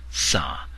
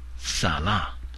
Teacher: you have to use a second tone the one with a longer relaxed vowel